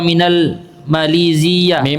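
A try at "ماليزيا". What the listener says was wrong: Malaysia. Zia. Tidak tasydid ya.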